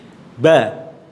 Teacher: Ba ketika diucapkan makhrajnya di dua bibir ini ya.